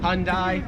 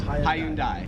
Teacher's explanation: Americans make it like two syllables like hyundai. Australians three syllables hyundai.